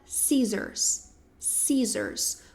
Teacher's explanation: O C, ele é silencioso, a gente não pronuncia a letra C. Então, fica scissors, scissors, com som de Z mesmo